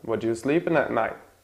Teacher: there's the consonant T at the end of the word, and the next word starts with another consonant, so it disappears.